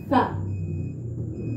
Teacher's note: Sa, ujung lidah kita berada di antara gigi atas dan gigi bawah.